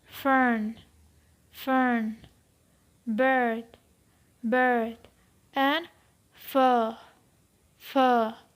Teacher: This is a long sound and its horizontal position is central and its vertical position is mid.